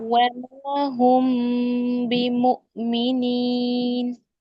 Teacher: دونوں ہونٹوں کا پراپر مل جانا، ٹھیک ہے، یہ تو میم کا اظہار ہے